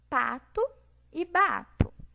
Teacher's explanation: os dois sons são bilabiais, né? O ponto é bilabial e o modo, os dois são oclusivas.